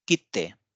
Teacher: this is ki, and after that we need a double T kind of sound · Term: double consonant